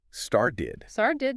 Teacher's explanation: You might expect a really crisp t sound, right? But listen closely. often it softens um almost becoming like a d sound. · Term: flap t